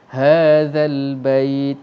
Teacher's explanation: Pastikan kita baca dengan ha, hadza, zal. Hati-hati, zal huruf yang disebut dengan lidah kita tu hujung dia terkeluar sikit antara gigi atas dan gigi bawah, seperti nak gigit tetapi tidak gigit.